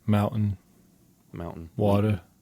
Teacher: your T's are uhs, and they're just like an apostrophe there instead of the letter T · in Utah, we drop the T for like everything